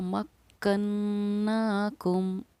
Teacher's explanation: किसी तरह का कोई ठहराव नहीं होगा, हम बस मीम को ज़ाहिर करेंगे और आगे बढ़ेंगे। इसीलिए हमने इसको पढ़ा मक्कन्नाकुम, क्योंकि मीम साकिन के बाद न बा है न हमारा मीम है। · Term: मीम का इजहार